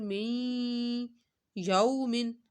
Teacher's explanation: یو کو ہم نے کھینچنا نہیں ہے کیونکہ یہاں پہ یا وہ لین ہو رہا ہے